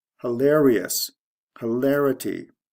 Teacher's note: the stress goes from the second to the third syllable ious to ity or if you want to consider the ity